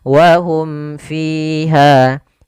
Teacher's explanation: Jelas suara mimnya dan tidak boleh ditahan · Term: izhar syafawi